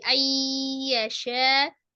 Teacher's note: idgham bi gunnahnya nun sukun ketemu dengan ya dari an ya menjadi ayyasha